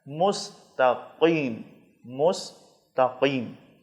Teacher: صراط، صراط، مستقیم، اس میں 2 نقطے والا قاف ہے جو موٹا ہے، زبان کی جڑ کو پیچھے ٹونسل سے آگے جو اوپر والا حصہ ہے تالو، اس پر لگانا ہے۔